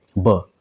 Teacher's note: ओष्ठ अल्प प्राण घोष वर्ण है